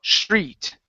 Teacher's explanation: Pronounce a CH sound. Okay, so replace that T with a CH.